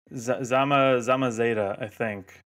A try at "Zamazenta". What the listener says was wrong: No, there's an Enta at the end. Zamazenta. it's very zen. Zen is in the name.